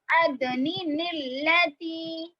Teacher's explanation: اب دیکھیے یہ نون ساکن ہو گیا, یہ لام ساکن ہو گیا, دو ساکن ایک جگہ جمع ہو گئے نا. جب دو ساکن ایک جگہ جمع ہو تو نون مکسور لائیں گے, اسی لیے ہم یہاں پر ادنی نلتی پڑھیں گے. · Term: نون ختمی